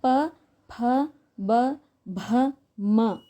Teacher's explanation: ಓಷ್ಟೆ ಅಂದ್ರೆ ತುಟಿಗಳ ಸಹಾಯದಿಂದ ಉಪಯೋಗ ಮಾಡಬೇಕಾದರೆ ತುಟಿಗಳ ಸಹಾಯವನ್ನ ನಾವು ಪಡೆದುಕೊಳ್ಳುತ್ತಾ ಇದ್ವಿ ಪ ಫ ಬ ಭ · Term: ಓಷ್ಟೆಯ